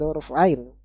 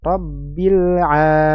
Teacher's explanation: makhrajnya dari wastul halki, tenggorokan bagian tengah, ya, dengan menghimpitkan katup, ya, menyempitnya katup ke dinding tenggorokan bagian belakang